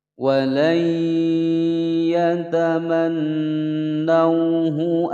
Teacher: Walayya, wa pendek, layya langsung masuk ke huruf ya. Sebab di sini ada nun sukun bertemu dengan ya. Hukum bacaan idgham bi gunnah, dimasukkan dan didengungkan selama 2 ketukan.